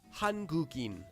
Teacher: Because there's an empty letter at the beginning of the sound in, whatever letter before it can flow through it as if it were connected.